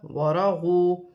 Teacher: واو مدہ بن رہی ہے، ایک الف کی مقدار کھینچ کر پڑھا جائے گا، نون ساکن میں بھی غنہ نہیں کیا جائے گا۔